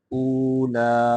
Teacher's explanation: حمزہ کو واو کے ساتھ ملا کے لمبا کر کے پڑھیں گے